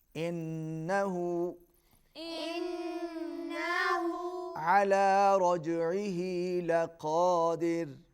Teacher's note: نون پر غنہ ہوگا، رجعه جیم پر قلقلہ، عین حلق سے ادا ہوگی